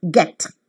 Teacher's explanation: the front part of the tongue is raised to the position between half close and half open. The lips remain unrounded.